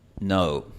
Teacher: La vocal O, como en la palabra inglesa no. Ahora, esta vocal en realidad no es una vocal pura, como la vocal española O, sino que es un diptongo. Un diptongo es básicamente dos vocales comprimidas en una sola sílaba.